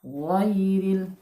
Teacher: Huruf ghain itu makhrajnya adalah di adnal halqi. Satu makhraj dengan huruf kha.